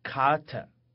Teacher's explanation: 我们在单词里面跟英语一样发▁k▁清辅音